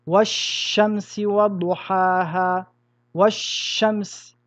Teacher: Nous allons donc rentrer le L dans le shin et mettre une shadda sur le shin. Nous dirons wash-shamsi wa-duhaha, wash-shams. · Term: idgham